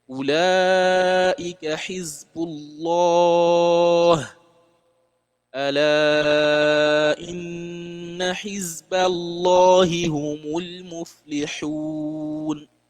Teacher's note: pronounce the word of Allah with a very heavy and closed mouth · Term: tafkhim